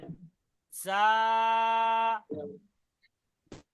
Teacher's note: এটা হবে উচ্চারণ হবে জিভের আগা, উপরের দাঁত আর নিচের দাঁতের আগা একসঙ্গে মিলে যাবে। জা, এক আলিফ টান দিয়ে, জা।